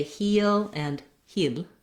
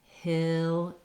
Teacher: that lax I sound with the tongue slightly lower and relaxed as opposed to the high and tense E